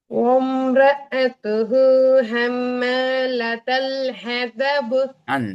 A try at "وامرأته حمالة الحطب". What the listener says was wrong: ஹதப்னு வரையல அது. ஆ ஹதப் வானத்தை நோக்கி போகணும்.